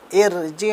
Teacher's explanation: ان کو ہم را کو باریک پڑھیں گے، مطلب پتلی آواز میں پڑھیں گے.